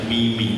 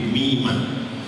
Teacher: mim dibaca fathah, mimah tidak sukun, tidak mimi tapi mimah